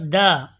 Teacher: دال زبان کی نوک اور اوپر کے دانتوں کی جڑ سے ادا ہوتا ہے